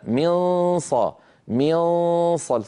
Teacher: انا ما وضعت طرف لساني على مخرج النون وضعته على مخرج الصاد من غير ضغط من فصار المجرى الفموي مفتوح لذلك هناك صويت يمر من الفم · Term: الاخفاء